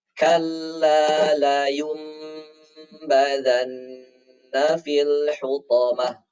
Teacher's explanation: Kita lihat di sini di atas nun ada huruf mim. Maka bunyi nunnya kita ganti dengan huruf mim.